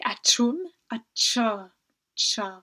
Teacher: Le son est un peu plus serré entre vos dents, vous devez retenir le son un peu plus longtemps.